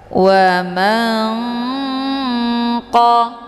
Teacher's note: Nunnya disamarkan kemudian siap-siap menuju ke huruf kaf. Wa man qa. Jadi ikhfa ab'ad ini dibacanya sambil didengungkan.